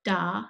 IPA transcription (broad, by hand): da